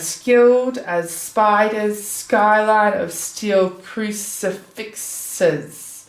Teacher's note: we can see tons of alliteration happening in stanza 7, and it is all this sibilant alliteration